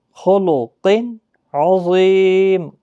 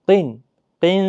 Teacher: یہاں پر اخفا نہیں کرنا ہے، تنوین کو ظاہر کرنا ہے